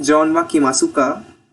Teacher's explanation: the question particle car at the end of the statement sentence using a rising intonation as you do in English